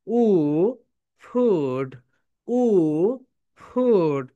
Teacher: উপরের দাঁত নিচের ঠোঁটের সঙ্গে টাচ করো।